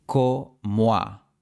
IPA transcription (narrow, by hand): ko.mo̯a